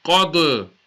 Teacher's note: Qaf, Dal, Zabar, Qad, Qad. Again, the dal is going to be a qalqala and the qaf is musta'liya, full mouth